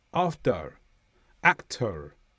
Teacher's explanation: in the USA and some parts of the north of the UK, there will be a hint of a R at the end. After, actor, a hint of a R at the end.